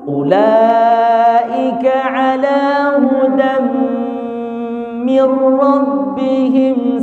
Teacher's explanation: Bila gunnah. Nun berjumpa sama huruf lam, maka tidak boleh berdengung.